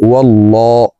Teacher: অথবা পেশ হইলে এই লামকে ল অর্থাৎ মোটা করিয়া পড়িতে হয় তো আমরা এই লামকে ল বলে পড়ব অর্থাৎ মোটা করে পড়ব